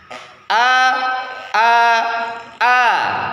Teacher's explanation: posisi ujung lidah tidak melekat ke langit-langit atau infitah ya tidak tidak melekat tidak nempel ke langit-langit ya ya cukup